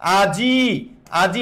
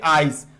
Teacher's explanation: এই রস্বইটা জয়ের পরে উচ্চারিত হচ্ছে, আজ ই, আর এবার জয়ের আগে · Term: অপিনিহিতি